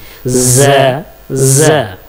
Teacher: ये भी जुबान की नोक जा को प्रोनाउंस करेंगे। जुबान की नोक सामने के ऊपर और नीचे के दांतों के दरमियान में ला करके जुबान को जा प्रोनाउंस करेंगे, जिसमें कुछ झंझनाहट की आवाज होगी।